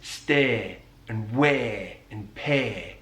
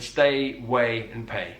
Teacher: he elongates the diphthong A